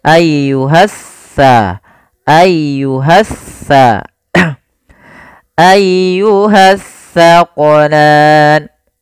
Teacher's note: Alif lam yang dia tertulis tapi tidak dibaca lamnya. sehingga langsung diidghamkan ke huruf setelahnya. Jadi seakan-akan huruf sin ya, maaf huruf sa. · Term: alif lam syamsiyah